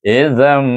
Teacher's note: Izam takdil dah nun dihazafkan daripada zal alif mim bunyinya izam dan zal tu tentukan dia keluar lidah masa menyebutnya